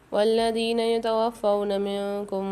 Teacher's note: والذین یتوفون منکم میں نون ساکن کے بعد کاف آ رہی، فمال غنہ کے 15 حروف میں سے غنہ کریں گے۔